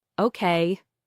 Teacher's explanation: When someone says, okay, with a falling tone, it usually means they agree or understand.